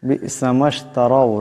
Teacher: রার উপর জবর আছে, আওয়াজটা মোটা করিয়া পড়তে হবে